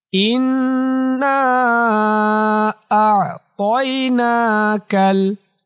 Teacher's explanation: ইন্না আ'তাইনাকাল। ইন গুন্নাহ করতে হবে, নাকের ভেতর নিতে হবে, নাতে 3 আলিফ টান দিতে হবে।